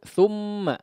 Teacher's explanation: tha-nya seolah menjadi panjang